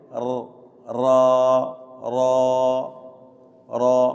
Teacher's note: را را پر ہے، موٹا پڑھیں گے، صفت تقریر ہے. ار ر ہلکی سی آنی چاہیے، اس کو صفت تقریر بولتے ہیں. ر کی آواز آتی ہے نا.